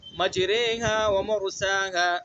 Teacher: مجراها، اس کے نیچے کھڑی زیر نظر آئے گی آپ کو، تو زیر کھڑی زیر نہیں پڑھیں گے ہمیں، بلکہ کیا پڑھیں گے، دونوں کے درمیان کا پڑھنا ہے